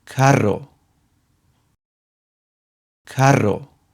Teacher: For words that have a strong R sound that is not at the beginning of a word, we use the double R, which has also a rolled R sound